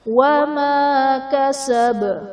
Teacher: کسب میں با حرف قلقلہ وقف کی صورت میں ساکن ہو جائے گا تو یہاں پر ہم قلقلہ خوب ظاہر کریں گے